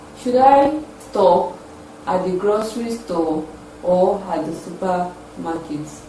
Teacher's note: The second option or the second alternative carries the falling tune.